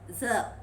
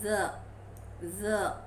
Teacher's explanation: It is voiced alveolar fricative.